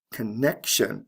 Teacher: again, the stress is right before the T-I-O-N ending.